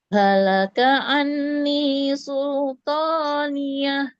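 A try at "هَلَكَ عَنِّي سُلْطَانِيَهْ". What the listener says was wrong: Tahan lagi nun tasydidnya.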